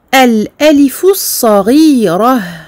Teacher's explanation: comme je marque l'arrêt, je transforme le ta en ha. Et je m'arrête sur un soukoun